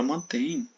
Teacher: A palavra mantém, ela é oxítona também, não é proparoxítona. Você pode ver que a última sílaba é a sílaba mais forte